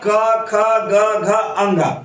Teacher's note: क ख जो है कंठ से बोला जाता है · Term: कवर्ग